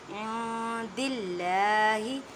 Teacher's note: اخفا کا مطلب ہے چھپانا، نون ساکن کی آواز کو آپ نے چھپانا ہے ایک الف کی مقدار میں، ان نہیں کہنا۔